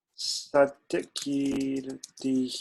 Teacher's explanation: the kakara is a harsh consonant so the dakara which is soft also becomes hard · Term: चर्त्वसन्धिः